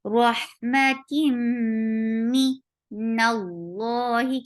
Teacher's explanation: Rahmatim for kasra, give e sound. This is idgham with gunna, so keep the sound in your nose for a longer time. Rahmatim Nallahi, keep noon light.